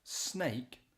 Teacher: So you've got that sibilant S at the beginning